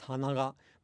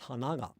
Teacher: And if you attach a particle, then both are ha, na, ga. But they don't have identical pronunciation because they have different pitch accent patterns.